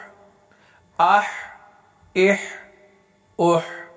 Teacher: ہا حروف قلقلہ میں سے نہیں ہے لہذا اس کو روک کر پڑھیں گے